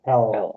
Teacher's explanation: tongue is when we speak English for the L for example with the L our tongue goes to the top of our mouth the front of it behind our front teeth